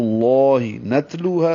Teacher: لو واو مدہ ہے، دو حرکات لمبا کریں گے. ہا الف مدہ ہے، دو حرکات لمبا ہوگا